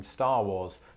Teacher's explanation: i don't pronounce either of the rs in star wars